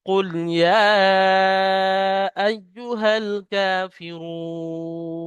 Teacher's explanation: র পেশ রু এক আলিফ টান ছিল কিন্তু এখানে সাকিন করার কারণে দাঁড়ানোর কারণে তিন আলিফ পরিমাণ টান হচ্ছে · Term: মাদ্দা আরজি ওয়াকফি